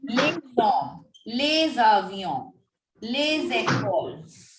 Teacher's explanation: We are carrying forward the sound of this S along with the following word. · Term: Z sound